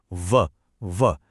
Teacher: जब हम व बोलते हैं तो निचला होठ ऊपर के दांतों को छूता है। · ये वो ध्वनि है जो दांत और होंठ से मिलकर बनती है। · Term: दंतोष्ठ्य, दंतोष्ठ्य ध्वनि